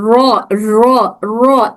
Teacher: ये वाइब्रेशन ज्यादा ना हो। वरना एक र की जगह दो र सुनाई देंगे। अगर वाइबेशंस ज्यादा कर देंगे र इस तरह से नहीं ज्यादा करने से दो र सुनाई देगा। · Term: रोलिंग ऑफ द टंग